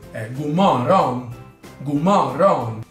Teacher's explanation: Un'altra cosa molto importante è nella parola bene, buono, good, la O si pronuncia come U in usare o nella parola uno, quindi è gu, e la D finale si sente molto poco, se non addirittura non si sente